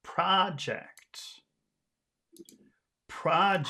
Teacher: a movie showing on a screen but yes this is a this is a noun and so the emphasis is on the first syllable